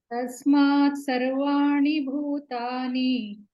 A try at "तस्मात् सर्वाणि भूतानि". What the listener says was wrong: Tani, not muni, ni, dental, not murdhani.